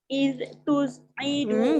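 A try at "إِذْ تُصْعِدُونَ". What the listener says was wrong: Jangan bunyi id. Tak mau bunyi the. Iz tus'iduna.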